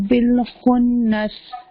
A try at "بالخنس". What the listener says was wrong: غنہ پورا کیجیے. بل نہیں ہونا چاہیے، لام کو ٹائم دیجیے.